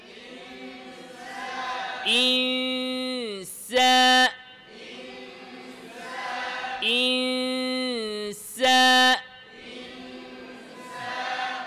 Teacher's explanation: নুন সাকিনের পরে সিন আসছে জিহ্বাকে সিনের মাখরাজের কাছাকাছি নিয়ে রাখেন সিনের মাখরাজ কোথায় জিহবার আগা নিচের দাঁত